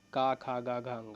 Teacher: का ख ग घ अ इसका उच्चारण का स्थान है कंठ